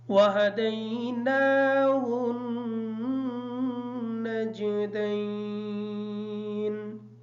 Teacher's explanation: نجدین کی جو نون ہے یہ نون مشدد ہے، اس پر مشدد کا غنہ ہوگا